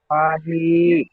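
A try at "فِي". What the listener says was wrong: ফাজের ফি পড়লেন আর ফের ফাহি করছে কেন? ইয়া সাকিনের ডান দিকে জের এসছে, ইয়া মাদ্দা হবে।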